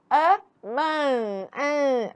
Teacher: Porque este som ele é nasalado. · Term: som nasal